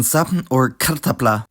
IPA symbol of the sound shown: p